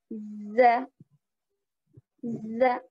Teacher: زبان کا بیچ کا حصہ اوپر تالو لگے